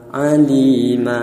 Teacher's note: Mad iwad ini apabila ada isim yang alamat nasabnya berupa tanwin fathah, selain fathahnya tak taknis atau tak marbutoh, dalam kurung ya mufrad mahal nasab dan diwaqafkan, maka tanwinnya diganti fathah yang dibaca panjang. Contohnya sami'an alima, alima.